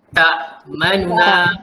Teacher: Saya dah dengar seorang sebut tadi dah cantik dah tu. Dia bunyi baris depan tapi macam hilang. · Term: hukum raum